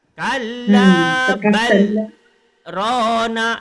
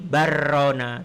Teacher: Jadi bal berhenti baru rona. Berhenti tanpa nafas. Kalau sakta itu dibuang baru jadi barona. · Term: saktah